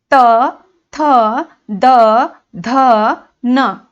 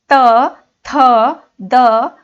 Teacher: हमारी जीभ कहाँ पर टच हो रही है? दांतों को टच हो रही है।